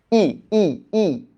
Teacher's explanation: ই যখন বলি না আমাদের জীভটা একটু সামনের দিকে চলে আসে। · দেখো তুমি যখন উচ্চারণ করো, উচ্চারণ করার আগে একটু তুমি উচ্চারণ করো তো, ই ই ই। দেখো ই যখন বলি না, আমাদের জিভটা না একটু সামনের দিকে চলে আসে, ই ই। কিন্তু আমরা যখন বলি, দেখো জিভটা একটু পেছনের দিকে চলে গেছে।